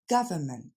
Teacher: L'accent tombe sur la première syllabe, ga, ensuite c'est le son f, et enfin ment. Je vous ai mis le N, mais finalement on l'entend pas vraiment.